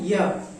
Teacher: ये उच्चारण करते समय हल्का य जो है, यदि हम बोलते हैं य तो हल्का जीभ जो है तालु में स्पर्श कर रही है